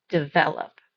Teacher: The second syllable was stressed, but not the last one